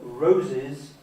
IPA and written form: ˈrəʊzɪz (Rose’s)